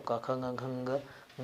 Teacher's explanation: क, ख, ग, घ, ङ इन सभी वर्णों का उच्चारण स्थान कंठ होगा